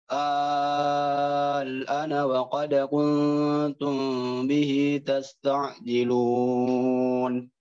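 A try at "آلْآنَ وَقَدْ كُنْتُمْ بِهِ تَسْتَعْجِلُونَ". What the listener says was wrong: Itu panjang 6 harokat. Setelahnya A-nya, ya ini ada A kedua. A kedua ini 2 harokat ya. A keduanya 2 harokat. Ini tanda matnya kurang tepat. Ini harusnya 2 harokat saja. Untuk A yang kedua. Jadi A yang kedua itu 2 harokat.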